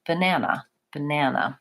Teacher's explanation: I'm not really saying this A vowel on any of the syllables except the middle syllable.